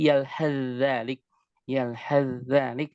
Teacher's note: Sa-nya masuk ke dalam za. Yalhath zalik, masuk secara sempurna dan masuk ke dalam pembahasan idgham kamil.